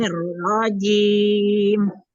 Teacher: jangan berhenti mimnya kasih alir dialirkan sedikit